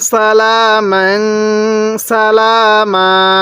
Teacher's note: এই ওয়াকফের সময় এক আলিফ টান দিব